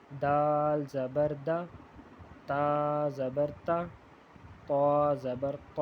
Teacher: تینوں کی آواز میں ان کی اور یہ آواز ایک جیسی ہے، اور دال ان سے تھوڑا مختلف ہے، لیکن ایک ہی جگہ سے ادا ہوتے ہیں، جو دانتوں کے جو جڑ ہے وہاں سے ادا ہوتے ہیں